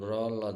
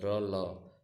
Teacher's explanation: र ल यह आपके दंत मूल से निकलता है